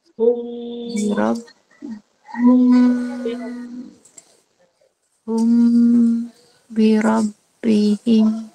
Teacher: ya tak bibir kita bertemu dan nyata. Jadi kalau ikhfa syafawi tersembunyilah sebab kita dengungkan dia